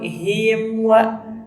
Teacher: Nah, di sini tidak boleh him wa. Nah, tidak boleh ada pantulan. Nah, mimnya harus jelas. Nah, oleh karena itu disebut dengan idhar syafawi.